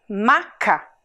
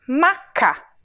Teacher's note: maca o som sai pela boca maca a gente chama isso de som oral